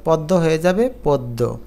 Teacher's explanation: আদ্য অ এর পর জ ফলা যুক্ত ব্যঞ্জন থাকলে অ এর উচ্চারণ ও কারের মত হয়